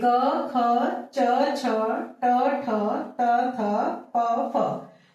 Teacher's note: इनको बोलते समय स्वर तंत्रियों में कंपन नहीं होता। ये अघोष वर्ण है।